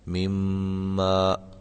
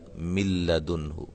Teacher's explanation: اس میں غنہ کیا گیا ہے مما، اور اس میں غنہ نہیں کیا گیا من لدنہ، ٹھیک ہے۔ اس کو ہم کہیں گے یہ ادغام بلا غنہ ہے یا بغیر غنے کے ادغام ہے، اور اس مثال سے ہمیں یہ جو ہے وہ ثابت ہوگا کہ یہ ادغام مع الغنہ ہے، غنے کے ساتھ ادغام کرنا ہے، ٹھیک ہے۔